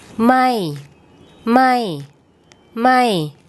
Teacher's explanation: a falling tone as if your is is as if you're calling someone from a long distance it starts off high and then it then it drops